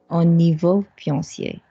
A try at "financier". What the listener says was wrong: Financier. Not fiancé, financier.